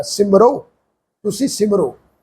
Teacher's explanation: ਹਹ ਦੀ ਔਂਕੜ ਦੀ ਮਾਤਰਾ ਆਪਣੇ ਤੋਂ ਪਹਿਲੇ ਰਰਾ ਅੱਖਰ ਦੇ ਉੱਪਰ ਉਲਾਰ ਹੋੜੇ ਵਾਂਗੂ ਪ੍ਰਨਾਊਸ ਹੋ ਰਹੀ ਆ ਸ ਨੂੰ ਸਿਹਾਰੀ ਮ ਰ ਹਹ ਨੂੰ ਔਂਕੜ ਦੀ ਮਾਤਰਾ ਸਿਮਰੋ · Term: ਉਲਾਰ ਹੋੜੇ ਦੀ ਮਾਤਰਾ